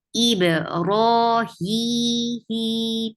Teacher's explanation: Ra is 2 counts long, and it is heavy here because ra, whenever ra gets fatha or dhamma, it gets heavy.